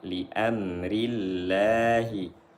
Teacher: lam jalalahnya dibaca tipis karena sebelumnya berharakat kasrah